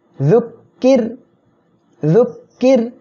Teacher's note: র সাকিন তার ডাইনে জের আসছে, চিকন করে পড়বেন